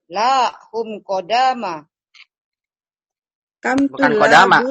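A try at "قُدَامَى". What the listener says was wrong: Bukan kodama. Kudama. Ulang. Kalau kodama nanti beda lagi artinya.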